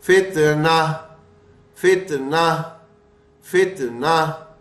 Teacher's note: گول تا آ رہی ہے، گول تا آنے کے بعد اس پہ کچھ بھی ہے ہم نے اسے گول تا کی جگہ گول والی ہا سے بدلنا ہے، اور وہ بھی جزم والی